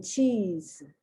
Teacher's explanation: The other sound is the Z sound. So the S sounds like a Z, as in cheese.